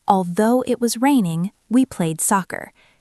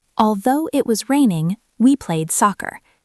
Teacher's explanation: The pause happens at the comma in the middle. Although it was raining, pause, we played soccer.